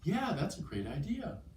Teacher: the rising intonation of someone who's very excited